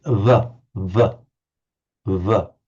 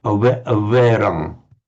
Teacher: It's almost a w, but the lips are slightly closer together. So it's between a w and a v.